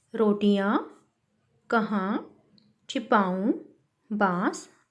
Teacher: इन शब्दों का उच्चारण नाक व मुंह दोनों से किया जाता है और इन्हें लिखने के लिए चंद्र बिंदु का प्रयोग किया जाता है। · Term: अनुनासिक शब्द